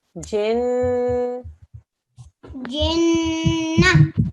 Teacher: The noon mushaddad means a 2-second nasal sound.